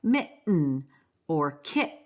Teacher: it's way back in your throat and it's called a glottal stop